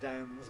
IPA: dænz